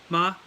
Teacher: So make sure with third tone, it just sounds down there low.